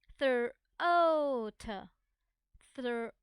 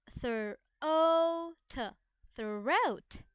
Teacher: Remember, OA is a diphthong that makes long O sound. OA makes long O sound.